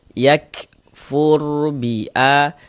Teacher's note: Maka huruf ro dibaca tebal dibaca tabkhim atau fathah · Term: huruf ro sukun